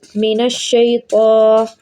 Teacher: شی، طا پہ زبر ہے، اور ویسے بھی طا جو ہے وہ موٹے حروفوں میں سے آتا ہے، طا موٹے حروفوں میں سے آتا ہے، اس لیے اس کو موٹا پڑھیں گے